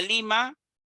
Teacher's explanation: Por ejemplo, la palabra Lima tiene una sílaba tónica, en este caso, li.